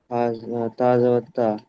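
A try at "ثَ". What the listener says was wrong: তা নয় সা সা।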